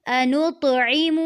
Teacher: انطعم میں طا پہ قلقلہ کرنا ہے، یعنی کہ آواز پلٹ کر آئے گی۔